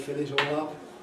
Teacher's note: And, well, the trouble is, of course, that the first of these, it might be fill in isolation, but if I say fill it all up, fill, it's going to be a clear L because of what follows.